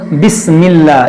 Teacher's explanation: اس میں جلالت کو ہم باریک پڑھیں گے، یعنی اس کو ہم بسم اللہ، اس کو موٹا نہیں کریں گے۔